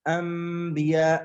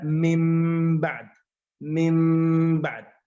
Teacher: نقول نقلب النون إلى ميم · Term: iqlab